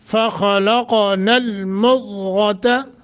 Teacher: خا اور قاف دونوں موٹے قلقلہ بھی ہے اور ضاد غین موٹا المضغة عظاما عظا ضا کر کے پڑھنا